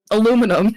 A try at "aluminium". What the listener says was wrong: No, you fucking pronounce the whole of that word and you like it. You pronounce the full aluminium. No, aluminium.